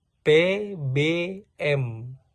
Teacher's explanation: Jadi di sini contoh dari fonetik, yaitu suara huruf P, P, dan kemudian B, and M, dan M dihasilkan dengan menutup bibir. P, B, M, dengan menutup bibir